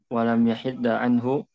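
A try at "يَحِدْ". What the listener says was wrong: Enggak, bukan yahid. Yahid. Ya, dia sukun bukan tasdid. mu'tal. Jadi dibuang huruf ilatnya hada yahidu. Sehingga ketika majzum ya huruf ilatnya dibuang jadi lam yahid.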